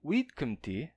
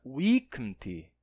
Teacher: Então, a gente perderia esse D em latim, gerando o que a gente chama de alongamento compensatório. O D se perde, mas a vogal precedente se alonga para compensar a perda daquela consoante. E aí o vidcanti se torna vicanti, que daria viginti.